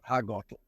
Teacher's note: the L sound is kind of a K and an L in the back of your throat